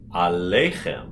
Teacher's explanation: have your l be far forward on the lei